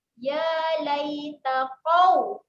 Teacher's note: Ya ni dibaca dengan panjang 2 harakat sebab ada alif kecil.